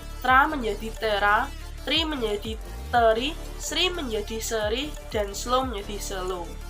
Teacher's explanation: Akibat penambahan E tersebut berdampak pada penambahan jumlah silaba. Konsonan pertama dari kluster yang disisipi bunyi E menjadi silaba baru dengan puncak silaba pada E. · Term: anaptiksis